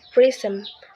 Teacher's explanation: in the word prism, the first syllable pris is stressed, while the second syllable m is not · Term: stress on the first syllable